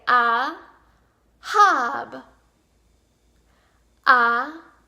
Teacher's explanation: the H sound originates in the same part of the throat as the French R